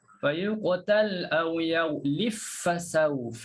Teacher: Okey, kalau kita baca Kisai, فَيُقْتَلْ أَوْ يَغْلِبْ فَسَوْفَ. Hilang terus qalqalah ba.